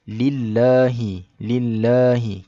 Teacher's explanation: dibaca secara nipis kerana huruf yang mula-mula dekat lam tu baris bawah. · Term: bacaan nipis